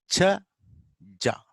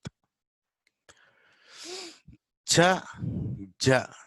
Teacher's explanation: These are combination of stops and fricatives. So both stop and fricatives, both will be there. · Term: affricate